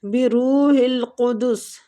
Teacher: قاف مستعلیہ حروف ہے پور پڑیں گے